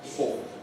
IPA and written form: fɔː (for)